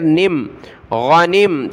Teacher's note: نون کو میم کے ساتھ ملائیں گے. نون میم زیر نم غنم تا میم پیش تم.